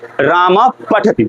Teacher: विसर्ग का उच्चारण ओष्ठ से होगा। क्योंकि बाद में ऐसा वर्ण आ रहा है कि ओष्ठ का इस्तेमाल करना ही है। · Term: उपधमनीय